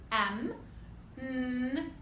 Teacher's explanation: The n happens with the tip of the tongue coming up to the bumpy gum ridge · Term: nasal sounds